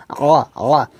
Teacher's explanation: আইনটাকে হলকের মধ্যখান থেকে চাপ উচ্চারণ করব